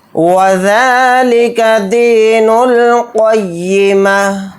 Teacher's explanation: ذال کے اوپر کھڑا زبر ہے، ذال کو تھوڑا کھینچ کر پڑھیں گے